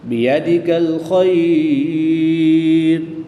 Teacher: یا ساکن سے پہلے حرف پر زبر ہے، تو یہاں پر یالین ہوگا، یالین کے بعد را کی پیش کو وقف میں ساکن کر دیں گے، تو یہاں پر وقف کی حالت میں مد لین عارض ہوگی، 2 سے 3 الف تک کھینچ کر پڑھیں گے